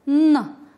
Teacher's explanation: Звук «н» – звук согласный, звонкий, твердый.